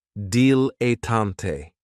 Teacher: Another great noun, which is another one of my favorites, is a dilettante, and this word has 3 syllables, and there's kind of like a stress on that first and last syllable